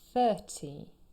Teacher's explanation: 30. Here the stress is on the first syllable.